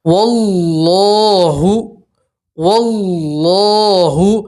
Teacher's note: اللہ کے لام سے پہلے زبر ہے تو اللہ کا لام آپ پور پڑھیں گے، موٹا پڑھیں گے